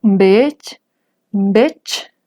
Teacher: a final de palabra, los dos sonidos son sordos. Dejan de vibrar mis cuerdas vocales y los dos se escuchan como la che del español, ¿no?